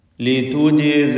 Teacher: ഉഖ്ഫീഹ ലിതുജിസ, ലിതുജിസ ഇതിലുള്ള ജീമിൻ്റെ സുക്കൂൻ ഖൽഖല സുഗ്റ നൽകി ശബ്ദം ഹറക്കത്ത് പോലെ ചലിപ്പിക്കണം